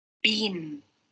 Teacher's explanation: Okay, so you can see that, for example, between the 2 words, beat and bean, the ending sound of the word bean is n. It is a nasal sound, and you can also see on the video when she said bean, the velum is lower, and there are some airstream going through the nose.